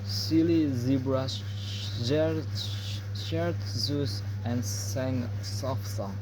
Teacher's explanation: Z is a voiced alveolar fricative, both in the same place and manner, but Z uses a vocal cord while S doesn't.